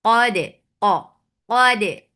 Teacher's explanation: Dal will get sifa qalqala and keep dal light. Because of this qaf, you should not make dal heavy.